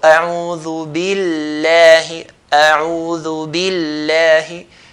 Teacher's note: So it's not going to be like a'udhu billahi, billahi, inna Allah. We're not going to cut the lam, but hold the lam before you do the fatha.